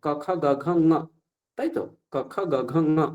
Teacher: ক বর্গের উচ্চারণ স্থান হচ্ছে কণ্ঠ।